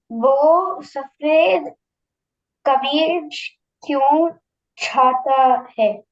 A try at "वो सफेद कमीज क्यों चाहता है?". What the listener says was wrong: Yes, perfectly fine.